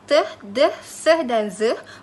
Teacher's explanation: bunyi yang dihasilkan dengan daun lidah atau hujung lidah berserta daun lidah secara bersama menyentuh batas gusi ataupun alveolar iaitu tulang yang timbul di belakang gigi atas. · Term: bunyi alveolar